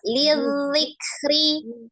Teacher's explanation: Dibedakan antara huruf dal dengan zal. Kalau dal siddah, zalnya roh. Lidzikri, ngalir zalnya.